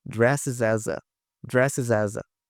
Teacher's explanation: a gente tem o S ligando com A e novamente o S com A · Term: link